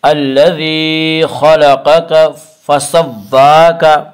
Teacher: الذی خلقک فسواک، واو کے پر کھڑا زبر ہے، کھڑا زبر کو 1 الف کے برابر کھینچ کر پڑھیں گے